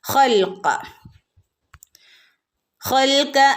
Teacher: ഖ തൊണ്ടയുടെ അക്ഷരം, ഖ നാവിൻ്റെ മുരട് ശ്രദ്ധിച്ചോതുക കേട്ടോ.